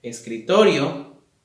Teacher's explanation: escritorio, la mayor fuerza de voz está en la sílaba to porque es donde tenemos la mayor pronunciación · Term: acento prosódico